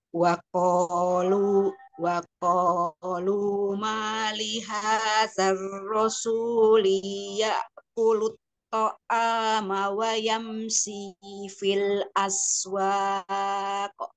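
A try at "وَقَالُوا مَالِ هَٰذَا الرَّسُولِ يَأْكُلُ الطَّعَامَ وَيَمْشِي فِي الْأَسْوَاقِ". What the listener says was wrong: Cuman ininya tadi hadzal. Hazar rasuli linya tadi kepanjangan li. Wa qaluma li hazar rasuli ya kul.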